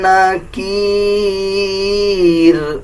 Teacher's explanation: اس میں بھی جب وقف کریں گے تو را کو باریک پڑھا جائے گا